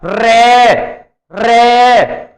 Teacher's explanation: रे जब हम बोलते हैं तो जुबान ऐसे समझो जैसे टूट रही हो, मुड़ती है बार बार। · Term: लुंठित व्यंजन